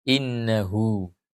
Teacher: Innahu, huruf nun dan huruf ain mengapit hak kinayah. Maka karena hak kinayah diapit oleh huruf berharakat yaitu nun yang berharakat fathah dan ain yang berharakat fathah, maka hak kinayah dipanjangkan.